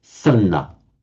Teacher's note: the sadhana just becomes sanna. So the D merges with the N. So sanna. So in Pali, by the way, remember that although the so is it prasanna is actually is the past participle, but then used as an adjective.